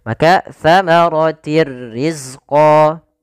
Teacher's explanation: idgham masuk artinya memasukkan bila gunah tanpa disertai dengan gunah sehingga hanya masuk saja tanwinnya kepada huruf ro tapi tidak ditahan dengan gunah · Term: Idgham bila ghunah, idgham bila gunnah